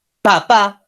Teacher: la cuerda vocal no vibra porque es un sonido que se lo llama sordo